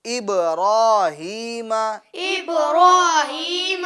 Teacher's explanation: ابراہیم إبراهيم اور با میں قلقلہ کریں گے یعنی آواز کو لوٹائیں گے